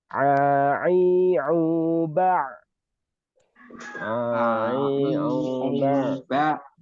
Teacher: suaranya itu di awal itu ain khalis a begitu. Tetapi di akhir itu ada seperti suara hamzah. Makanya a a bukan a. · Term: huruf ain